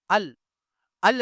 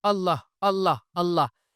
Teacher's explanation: പറഞ്ഞു നോക്കൂ നാവിന്റെ തല നമ്മുടെ മുൻപല്ലിൽ തട്ടുന്നുണ്ടെങ്കിൽ അവൻറെ അള്ളാ ശരിയായിട്ടില്ല അങ്ങനെയാണ് നാവിന്റെ തല മുൻപല്ലിൽ തട്ടാതെയാണ് നമ്മൾ അള്ളാ എന്ന് പറയേണ്ടത് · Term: ലാമിന്റെ മഹ്റജ്